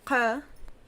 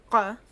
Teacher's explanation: the guttural constricting of the top of your throat for the Q sound